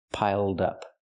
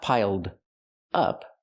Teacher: Now let's change the phrasal verb pile up into an adjective, piled up. We have the d sound for the ed. Link the sounds, piled up. Pronounce it like one word, not piled up, but piled up.